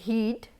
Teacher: only there is difference in the vowel, the consonant sound h and d are same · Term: different vowels